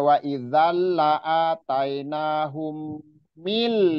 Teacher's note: ini langsung mil nun sukun bertemu lam, jadi jangan sampai di ikhfa